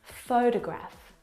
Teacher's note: the first syllable is the stressed syllable you can hear it very clearly photograph o fo de Graaff the second syllable is unstressed and